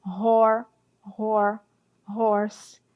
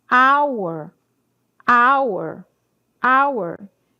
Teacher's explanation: Horse tem som de R, mas hour já tem um som de a aberto